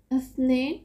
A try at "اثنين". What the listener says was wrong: اثنين ف جو ہے نا اثنين یہ کچھ لوگ اثنين کہتے ہیں، سین سے نہیں ہوتی، یہ تین نقطے والی ف سی ہوتی ہے.